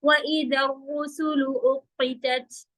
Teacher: رو heavy, سلو سیدھا